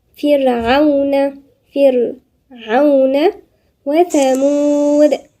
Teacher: والثاء هنا من الحروف اللثوية